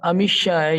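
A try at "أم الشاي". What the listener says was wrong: ام شایا اس کو لمبا کرنا ہے. یہ دو حمزے ہیں، ایک حمزہ تو ہو گیا کوشچن کا حمزہ استفہام، اور دوسرا حمزہ جو ہے وہ الک ہے نا.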